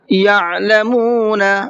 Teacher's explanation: عین کو حلق سے نکالنا ہے